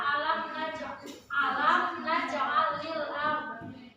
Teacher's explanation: Itu hukum bacaannya adalah izhar syafawi karena mim mati bertemu salah satu huruf izhar syafawi yaitu nun dan dibaca jelas